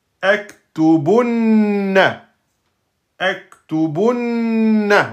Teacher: Vous restez plus longtemps sur le noun et sur le mim shidda. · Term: noun shidda deux temps